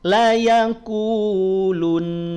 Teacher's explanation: maka tahan dulu dua harakat jangan langsung dilepaskan ya tapi tahan dua harakat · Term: dengung